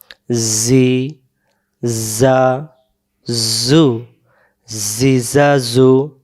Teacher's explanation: যা অক্ষরের সামনের নিচের দাঁতের আগা থেকে শীষ দিয়ে পড়তে হয়